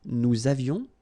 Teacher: Nous avions, little liaison, final S not pronounced.